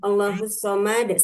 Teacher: dipantulkan karena dal ini merupakan salah satu dari huruf pantulan ya, huruf qalqalah